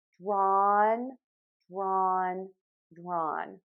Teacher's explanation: I am going to make that open ah sound, oval shaped mouth. That helps me get my tongue tip low in the front and the back pulled high up. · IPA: /drɔn/